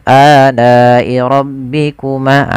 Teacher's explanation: mad wajib muttasil, panjangnya adalah dia 4 harokat atau 5 harokat, ditandai dengan adanya mad tabi'i bertemu hamzah pada satu kata. Maka wajib dipanjangkan 4 harokat dan jangan sampai dikurangi.